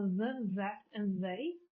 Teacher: So the, that, and they would be voiced in the beginning of the word. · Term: voiced the